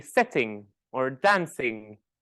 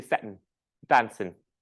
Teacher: I will eat the G sound at the end of a word · I will have a glottal drop at the end of ing words